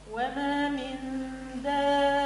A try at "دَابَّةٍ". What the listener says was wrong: شدد اللي عملته كله صحيح، من التضعيف بتاع الباء ناقص. شدد،